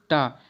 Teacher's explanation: इसे बोलते समय हमारी जिह्वा जो है दांत को स्पर्श नहीं करती